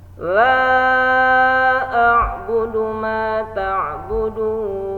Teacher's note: Mad bertemu hamzah. Maka kita ngambil panjang 4 harokat untuk sama biar seragam dengan ayat sebelumnya.